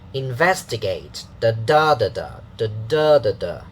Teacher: 4 syllables. 1, 2, 3, 4, and then stress falling on the second one, so the pitch also has the second syllable strong.